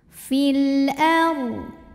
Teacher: lam qamariah karena alif lam menghadapi huruf qamariah yaitu Hamzah maka lam dibaca dengan jelas jadi bunyi asal l ya dan tidak ditahan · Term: alif lam qamariah